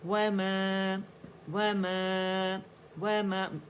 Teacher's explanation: امالہ نہیں کریں گے ہم، آواز وما کر کے نہیں پڑھیں گے. عربی ایکسنٹ میں پڑھیں گے، باریکی سے پڑھیں گے، لیکن آواز کو اوپر لے کے جائیں گے